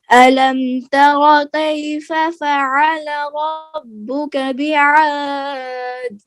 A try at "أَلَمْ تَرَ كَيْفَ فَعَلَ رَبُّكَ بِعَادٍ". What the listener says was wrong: دال میں قلقلہ کرنا ہے. ألم تر كيف فعل ربك بعاد.